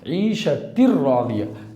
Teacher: عیشتن راضیہ نہیں بولنا، عیشتر راضیہ، تا سیدھا را میں ملے گا، ہے نا، تا را زیر تر، تا را زیر تر، عیشتر راضیہ۔ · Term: ادغام بلا غنہ